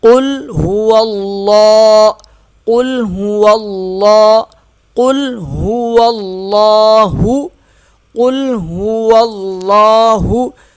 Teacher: قاف موٹا ہوگا، ہا سینے سے ادا ہوگا، یہ واو لام کے ساتھ سختی سے ملے گا اور لام موٹا پڑھا جائے گا۔